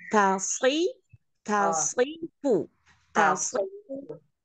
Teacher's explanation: To jangan diangkat to-nya. Tapi karena dia sebelahnya huruf sod, sodnya aja yang diangkat. T-nya tetap tipis.